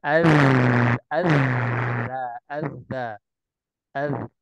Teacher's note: dua-duanya punya sifat rwah atau rikhwah jadi mengalir ketika kita sukunkan mengalir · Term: rakhwah